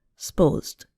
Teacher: a two-syllable word, supposed, becomes more like one syllable, sposed.